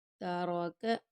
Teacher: را کو پر پڑھیں گے، کاف کو باریک